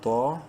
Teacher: منہ بھر کے پڑھتے ہوئے طا کو ایک الف کے برابر لمبا کریں گے الف مدہ کی وجہ سے